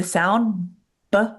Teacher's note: your lips are closed and they puff open to make the B sound